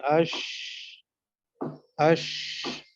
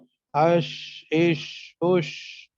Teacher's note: آواز منہ میں پھیل جاتی ہے، اش اش، ہے نا، اش اش اش، تو آواز منہ میں تو گویا کہ پھیل جاتی ہے، اس لیے اس کو تفشی بھی اس کے اندر پائی جاتی ہے.